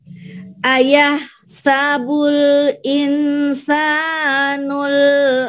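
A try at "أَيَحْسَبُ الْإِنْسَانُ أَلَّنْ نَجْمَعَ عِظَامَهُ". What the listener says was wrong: Enggak, nu aja ketinggalan. Nu al. Ya, ayah sabul insanu alai. Ada A-nya dulu.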